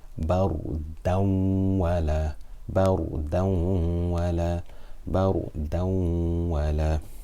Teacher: the noon sound of the tanween will be completely merged into the waw with ghunna for 2 harakat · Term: idgham with ghunna